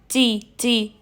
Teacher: آپ کی زبان بالکل فلیٹ رہے گی، ٹھیک ہے، جس کی وجہ سے جو باریک والا تا ہے وہ باریک ہی پڑھا جائے گا اور ہلکی سی ایئر بھی آئے گی. · ادا کرتے ہوئے ہلکی سی ہمس جاری ہوگی، ایئر فلو ہوگی